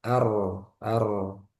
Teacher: nun sukun bertemu ro idgham bila ghunah diidgamkan nun ke ro jadi langsung ke ro nunnya enggak dibaca Maka dia tandanya tasdid jadi langsung ke ro sempurna ke ro ar ar ar ar ar. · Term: idgham bila gunah